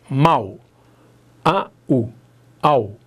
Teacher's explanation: A vogal veio antes, a semivogal veio depois. A escadinha está descendo, o ditongo é decrescente. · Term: ditongo decrescente